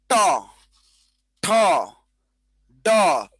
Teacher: জিহ্বাটা উল্টে গিয়ে উপরের তালু স্পর্শ করে। জিহ্বা উল্টে গিয়ে উপরে তালু স্পর্শ করে, সেটাকে বলা হয় মূর্ধন্য ধ্বনি বা মূর্ধা। · জিহ্বা উল্টে গিয়ে উপরে তালু স্পর্শ করে, সেটাকে বলা হয় মূর্ধন্য ধ্বনি বা মূর্ধা। ট, ঠ, ড, প্রত্যেকটা জিহ্বার ডগা উল্টে গিয়ে উচ্চারিত হয়। এটাকে বলা হয় মূর্ধন্য ধ্বনি।